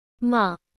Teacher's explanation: the tone dips down and then back up again like stretching out the word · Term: Dips down then up